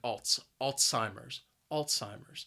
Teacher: talking about a disease that results in memory loss alzheimer's now the word has three syllables and the stress is on that first syllable · the stress is on that first syllable. And I think that first syllable is what makes this word a little challenging.